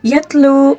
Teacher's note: ہوتا ہے، ٹھیک ہے۔ یتلو، اب دیکھیں یتلو واو مدہ ہے، یہاں پر پھر واو مدہ کو ایک الف کے برابر کھینچ کر پڑھنا ہوتا ہے